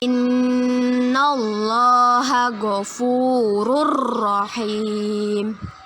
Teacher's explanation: Nun bertasydid gunnah. Kita baca dengan berdengung ditahan 2 harokat.